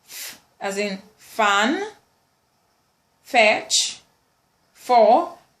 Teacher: We have the labiodental fricative, f as in fan, fetch, for